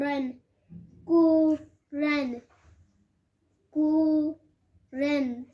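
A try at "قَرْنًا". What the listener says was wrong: اچھا جی کو قاف بنائیں اور کو زیادہ نہ کیجیے قرن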